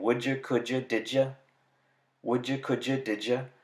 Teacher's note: the j sound, which when combined with the alveolar stop d makes the affricate j.